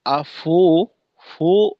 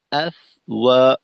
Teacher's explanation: ফায়ের কার্যক্রম পরিপূর্ণ শেষ করার পর ওয়াবের উচ্চারণে আসবো। যেন ফায়ের উচ্চারণ চলমান থাকা অবস্থায় ওয়াবের প্রস্তুতি স্বরূপ ঠোঁট গোল করে না নেই, এটা সমস্যাকর।